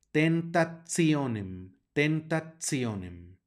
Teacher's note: una t seguida en una I y otra vocal que en este caso es o la t va a sonar como ts